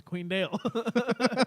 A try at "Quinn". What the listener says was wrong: Quinn. It sounded like you said Queen.